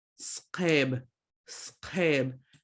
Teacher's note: So you've got the Q from the back of your throat.